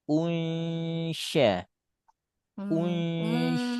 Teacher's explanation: lalu angkat tengah lidah, sebutkan nun sukun tapi lidah sudah lidah shin sehingga bunyinya menjadi khas unsya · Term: ikhfa